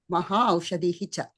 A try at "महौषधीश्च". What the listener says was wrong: కలిపి ఇక్కడ విడదీయకూడదు. మహా దగ్గర విడదీయకూడదు. మహౌషధీః కలపండి.